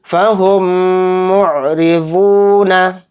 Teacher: मीम साकिन के बाद क्या आया, मीम। तो इस मीम को मीम से मिलाकर गुन्ना करेंगे। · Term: इदगाम शफवी